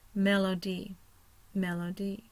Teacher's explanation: So O becomes a syllable all by itself. Mel is my primary. Schwa is the O, the second syllable.